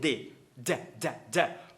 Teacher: Porque quando a gente faz um d D d D d muito rápido, bate a língua muito rápido, ele vira um r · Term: quick D